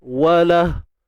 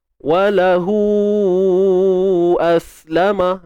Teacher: Bacaan panjang, mat yang berlaku ketika silah. Iaitu ketika bersambung dan dibaca dengan tawilah. Dibaca dengan panjang. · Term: mat silah tawilah